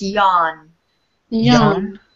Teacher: the W is not really pronounced